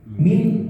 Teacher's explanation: Nah, tetapi Pak di sini karena di akhir, bukan sebenarnya tidak di akhir Pak ya, dipotong Pak, maka cara bacanya adalah min. Nah, min kita jelaskan dulu nunnya, kemudian di akhir kita kasih huruf ha, min. Tapi nun dulu Pak, jangan langsung ke ha.